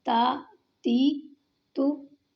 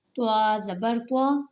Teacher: تا کو باریک پڑھنا ہے، دال کو باریک پڑھنا ہے اور طا کو پر پڑھنا ہے۔